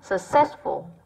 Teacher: Vậy ở đây cái từ sơ, ở đây chữ U nó đọc thành âm ơ nhé